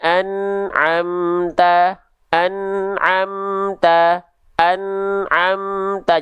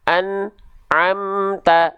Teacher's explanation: tidak boleh ada jarak antara n dengan Ain ya Enggak boleh putus suaranya kalau putus suaranya nama sifatnya harusnya Nun itu syiddah kalau misalnya · tawassud itu dia masih sedikit mengalir suaranya nya jadi enggak boleh betul-betul putus Jadi ketika kita lafalkan ya